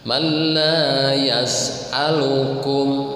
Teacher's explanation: Kalau bila gunnah, lam dan ro itu tanpa gunnah, tanpa dengung, jangan ditahan. Man la yas'alukum, yas'a ya, harus jelas.